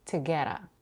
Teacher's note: And another flap T at the end of get in together, together. And two is reduced to T with a schwa, together.